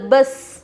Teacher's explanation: سین کے اوپر اگرچہ کہ جزم ہے لیکن اس میں ٹکراؤ نہیں ہوگا، کیوں؟ کیونکہ یہ حروف قلقلہ میں سے نہیں ہے۔